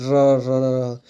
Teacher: जिन व्यंजन वर्णों का उच्चारण करते समय जीहा में दो-तीन बार कंपन होता हो उन्हें परं कंपित व्यंजन कहते हैं र याद रखिएगा र र